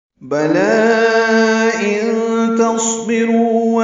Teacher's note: بلا میں لام پر کھڑا زبر ہے اور اس کے بعد حمزہ ہے، دوسرے کلمے میں مد منفصل بنے گی ملا کر پڑھنے کی صورت میں۔ وقف کرنا ہو تو بلا ہی پڑھ سکتے ہیں، لیکن ملانا ہے تو مد منفصل۔